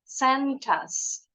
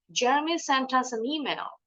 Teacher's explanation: connecting the consonant sound to the next vowel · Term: linking sound